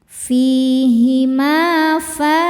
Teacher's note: Ma hukumnya mad thabi'i dzahiri karena ada alif didahului harakat fathah. Cara bacanya panjang dua harakat.